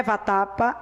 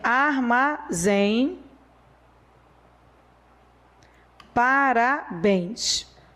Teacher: a tonicidade de todas essas palavras recai na última sílaba